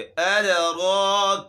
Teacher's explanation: वमा अद, दाल है, ये साकिन है, इसमें हमने झटका देना है। अद, अद रो, अगला हर्फ है रो, कड़ा ज़बर है इसके ऊपर, इसको मोटा करेंगे